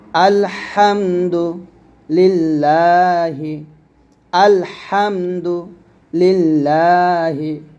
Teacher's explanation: আলহামদু লাম লাম জের লিল লাম একটান হবে লিল্লাহ হাজেরিহ লিল্লাহি আল্লাহ শব্দ লামের ডানে জের আসলে আল্লাহ শব্দ লাম পাতল হয়